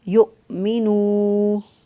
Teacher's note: ان یؤمنوا، حمزہ کو جھٹکے سے پڑھا، یؤمنوا، نون پیش واو نو، واو مدہ، واو ساکن سے پہلے والے حرف پر پیش ہو تو واو مدہ ہوتا ہے، اس کو ایک الف کے برابر لمبا کریں گے